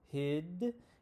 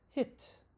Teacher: it's longer before voiced sounds so hid and shorter before voiceless sounds hit · it's a front middle vowel what this means is your tongue is at the front and the middle and we say with relaxed lips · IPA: /ɪ/